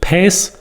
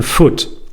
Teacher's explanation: latin word pes and latin represents the pre-grim's law situation so the per in pace changed to fur in foot